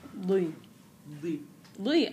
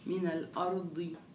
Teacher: كويس كثير بس الضاد اه بدها شويه تفخيم